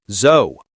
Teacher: The American O here is rounded.